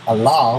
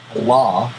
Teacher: Allah with a light L means God, little g, God. Allah, dark L, big God.